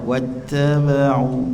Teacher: ba sifat dia nipis makhrajnya di bibir